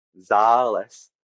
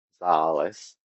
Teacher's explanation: When one is meaning medicine, zales, it has a steady tone. Zales, the same sounds, but it goes down in pitch.